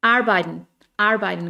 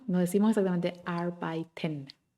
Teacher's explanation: Y ahí es donde no suena, arbeiten. Apenas suena la R o no suena inclusive.